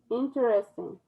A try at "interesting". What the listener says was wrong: You don't say that ER in the middle. It's interesting, not interesting. The correct way to say that word is interesting. You're saying it correct, but that's not the way people use it in conversation.